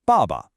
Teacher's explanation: Here we have a fourth tone, ba. It's sharp, it's quick, it falls.